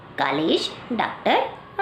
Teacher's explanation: इसका उच्चारण आ और ओ के मध्य की ध्वनि आ के रूप में होता है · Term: आगत स्वर